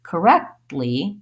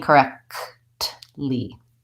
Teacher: What I do is I stop the air further back in my mouth. I lift my tongue up for the T, and then I release it right into the L.